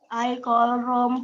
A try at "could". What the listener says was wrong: Bukan call, could. Bacanya could. L-nya nggak ada. Kata L-nya nggak dibaca.